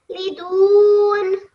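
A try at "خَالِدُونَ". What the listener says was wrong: So it is just bit thick sound of ha. Otherwise, you read really well, mashallah. So it is khalidun.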